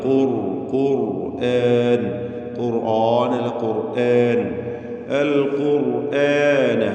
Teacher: നാവിന്റെ അങ്ങേയറ്റം തഫ്ഹീം ചെയ്യേണ്ട അക്ഷരമാണ് കാഫ് തടിപ്പിച്ചു പറയണം